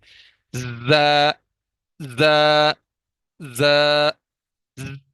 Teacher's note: زا کو سختی سے ادا کریں گے، اوپر اور نیچے والے دانتوں کے کناروں کو آپس میں ملائیں گے، اور زبان کی نوک ہلکی سی درمیان میں ٹچ کرتے ہوئے سیٹی کی آواز سے زا کی ادائیگی کریں گے